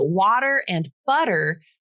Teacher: water and butter those t's turn into the flap uh they're within the same word and it's happening between syllables